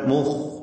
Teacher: മുഖ് എന്ന് പറയുമ്പോൾ ഖായിന് തഫ്ഹീമാണ്